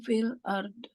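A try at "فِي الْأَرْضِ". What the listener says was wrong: Jangan dikol-kolahin. Fil ditahan. Mewakafkan bod. Lidah kita letakkan ke tepi di mana tempat makhraj do. Tapi ditahan. Kalau dilepas, dia jadinya kol-kolah. Nah, setelah selesai makhrajnya, langsung dimatikan. Ditahan. Jangan dipantulkan.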